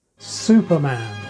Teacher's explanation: Superman may have set the pattern for putting the stress on the first word when the second word is man, which seems pretty much exceptionless.